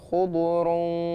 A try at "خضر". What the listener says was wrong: ما تقلقلش الضاد تاني. لا بتقلقل خضري دي ما بقلقل خضر أقف عليها.